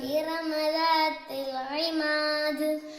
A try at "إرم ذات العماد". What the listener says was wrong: ഇവിടെ പുള്ളിയുള്ള ദാലാണ് ദ അങ്ങനെയാണ് നമ്മളവിടെ ഉച്ചരിക്കേണ്ടത്. പിന്നെ ഇമാദ് ഇത് എന്ന് കറക്റ്റായിട്ട് അവിടെയും പറയണം.